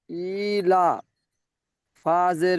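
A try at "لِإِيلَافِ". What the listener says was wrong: হামজা খারাজের টান দিলেন আর লাম খারাজের টান দিলেন না কেন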